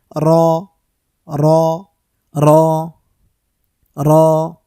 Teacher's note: র উচ্চারণ করার সময় জিহ্বার আগাটার মধ্যে কম্পন সৃষ্টি হবে কম্পন তৈরি হবে যেটাকে তাজহিদের পরিভাষায় তাকর বলে তাকর তো তাকরটা আমরা ছেড়ে দেই